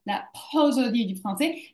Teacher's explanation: je fais un accent d'intensité sur la première syllabe de prosodie